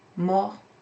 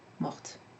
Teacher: the pronunciation changes to morte because the E after the T makes the T sound